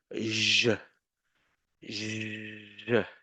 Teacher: It's a it's a sh sound sh but voiced. So I put the tip here.